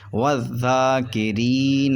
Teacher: یہاں پر را باریک ہوگا کیونکہ را پہ زیر ہے